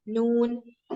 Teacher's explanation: നൂൻ പല്ലിന് ടച്ച് ചെയ്യൂല, പല്ലിന്റെ ബാക്കിലുള്ള ഗംസ്, മേലുള്ള ഇങ്ങനെ കുറച്ച് ഹാർഡ് ആയിട്ടുള്ള ഗംസിന്